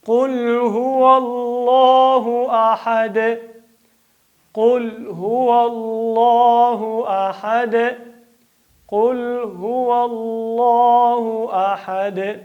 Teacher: قل قاف ډکوئ. قل هو الله، د الله نوم ډکوئ.